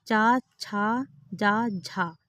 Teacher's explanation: जो चा वर्ग होते हैं तो वह चा वर्ग जो है तालव्य व्यंजन कहलाते हैं।